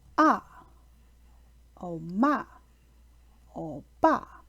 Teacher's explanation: The fourth tone is a descending tone that starts at a high pitch and then moves down to a lower pitch.